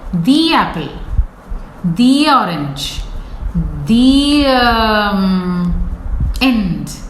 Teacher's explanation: there is no gap between the 2 words